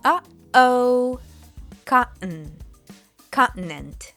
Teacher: Basically, you stop the airflow for a moment, like when kids say, uh-oh.